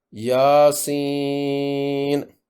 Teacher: آگے سین زیر والا اور یا مجزوم دونوں مل کر یائے مدہ بن گئے، ان سے آگے نون ساکن ہے۔ حرف مدہ کے بعد ساکن حرف کی وجہ سے مد لازم حرفی مخفف ہوگی۔ · یا پر کھڑی زبر کی وجہ سے الف مدہ یا مد اصلی ہے، 2 حرکات لمبا ہوگا۔ آگے سین زیر والا اور یا مجزوم دونوں مل کر یائے مدہ بن گئے، ان سے آگے نون ساکن ہے۔